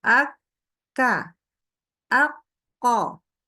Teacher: ketika dia sedang tasdid atau sukun ak ka aqqo gitu ya dia syiddah tegas berhentinya tegas